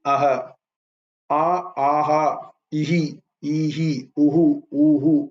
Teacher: the visargam in Sanskrit will take the sound of the vowel preceding it. So, for example, in Sanskrit, you put that visarga next to a, it will be aha, aha, ihi, ihi, uhu, uhu, like that.